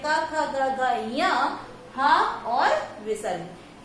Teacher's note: अ का वर्ग जिसमें क, ख, ग, घ, ञ, हा और विसर्ग का उच्चारण स्थान कंठ होता है